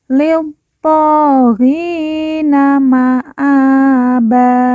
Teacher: th kita baca panjang dua harakat karena di atasnya terdapat Alif kecil